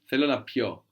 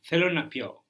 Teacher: The accent falls on the end here when we change it from pino to pio.